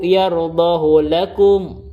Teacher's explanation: Hu-nya itu tidak dibaca mad, di bil qasri dia dibaca 1 harokat saja. Kenapa? Walaupun sebelumnya berharokat yaitu do, dan setelahnya berharokat, ini adalah kekecualian.